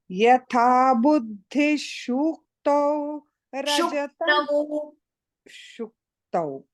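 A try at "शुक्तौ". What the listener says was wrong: Not shu. I mean, slightly dirgha was heard. Shuktau.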